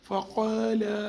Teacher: قاف کو زبان کی جڑ سے ادا کریں گے، الف مدہ ہے، اس سے پہلے زبر ہے، ایک الف کے برابر کھینچیں گے.